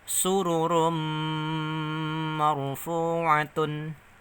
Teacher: ketemu huruf mim Berarti masuk dengan mendengung namanya Idgham Bighunnah